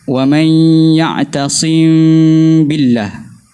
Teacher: ikhfakan mim, kurangkan pautan pada makhraj mim, kemudian masuk kepada huruf ba. Wa man ya'tasim billah, berserta dengan jelaskan gunnah tu, panjangkan gunnah.